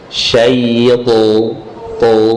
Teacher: Itbaq itu artinya suara terkepung, terkumpul antara lidah dengan langit-langit, tebal di dalam. Pangkal lidah naik dan suara tebalkan.